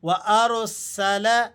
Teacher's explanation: را اگر ساکن ہو اور اس سے پہلے والے حرف پر زبر ہو تب بھی ہم نے را کو موٹا پڑھنا ہوتا ہے۔ اسی وجہ سے ہم یہاں اسے موٹا کر کے پر کر کے ادا کر رہے ہیں۔ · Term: را ساکن